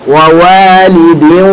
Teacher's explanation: Ya, sehingga hati-hati, antum harus aktifkan dua-duanya itu. Jadi antum masuk ke huruf waw, zatnya jadi huruf waw, tapi tetap ada gunnah yang keluar dari al-khusyum. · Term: idgham naqis